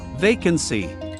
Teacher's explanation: Remember to stress the first syllable in the word vacancy.